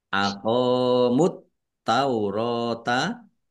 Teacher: Aqamut taurota qaf fathah alif mat tabi'i panjang dua harokat. At-taurota alif lam samsiah karena tidak dibaca langsung masuk ke huruf berikutnya yaitu ta ditandai taknya ada tasdidnya.